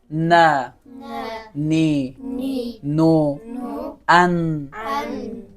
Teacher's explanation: هرگاه نوک زبان به بیره های دندانهای بالا برخورد کن حرف چی است نون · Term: حرف نون